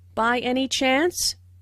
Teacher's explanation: Notice the rising intonation, which is used in yes/no questions to confirm that something is true.